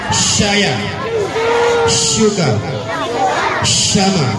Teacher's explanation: Jadi shin itu artinya SY kalau bahasa Indonesianya, ya. Tengah lidah ke langit-langit.